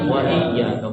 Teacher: جب واو کو ہم پڑھتے ہیں تو اپنے ہونٹوں کو ذرا گول کرنا چاہیے۔